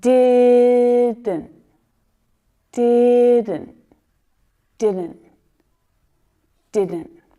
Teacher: that first D is stronger than the second one